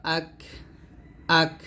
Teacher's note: এখানে কাফটা হামসের হরফ এখানে হামস মানে হচ্ছে বাতাস বের করতে হবে হামজা কাফ জবর আক আক বা জবর বা আক বা র